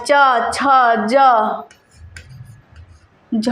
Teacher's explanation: च वर्ग का उच्चारण स्थान तालू से होता है